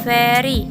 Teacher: dihasilkan oleh Gigi atas dan bibir bawah yang dimana disebut labiodental